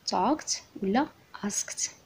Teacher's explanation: نشوفو الباست تنس، عندنا ايدي كتنطق حتى هي بثلاثه الطرق على حسب شنو جا قبل منها. الا قبل منها voiceless sound كتنطق ت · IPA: /-t/